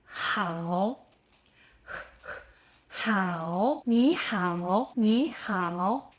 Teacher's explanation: In Mandarin, h has more friction than English. You should feel a slight roughness, like the air is being squeezed through a narrow space at the back of your throat. It's not a huge difference, but it's noticeable.